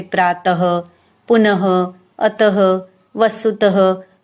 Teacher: ह की तरह इन दो बिंदु को बोला जाता है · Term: विसर्ग